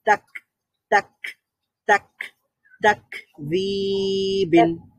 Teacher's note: ক সাউন্ডটা বন্ধ হয়ে যাবে কিন্তু একটা বাতাস জারি থাকবে